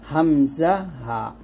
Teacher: 1 নম্বর মাখরাজ, কণ্ঠনালীর শুরু হইতে উচ্চারণ করতে হবে হামজা, হা